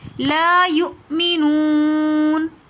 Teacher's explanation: لا یؤمنون، واو ساکن اس سے پہلے پیش ہے، واو مدہ اور اس کے بعد ساکن آ رہا ہے تو اس لیے لا یؤمنون ہم نے اس کو تھوڑا سا کھینچ کر پڑھا